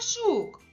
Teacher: Перший звук ж, він твердий, приголосний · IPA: [ж]